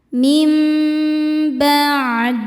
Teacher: Selanjutnya ada hukum iqlab lagi ya, karena nun sukun berhadapan dengan huruf ba. Maka cara bacanya bunyi nun sukun diganti bunyi mim sukun, kemudian tahan dengungkan.